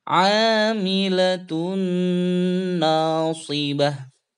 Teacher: Nun bertasydid jadi dengung dua ketukan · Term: gunnah